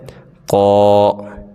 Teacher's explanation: قاف کو بھی موٹا پڑھیں گے